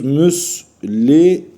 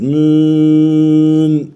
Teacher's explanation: Müslimün ayet sonu olduğu için dört elif çekerek meddi arızı yaparak duruyoruz. Mün diye durmuyoruz.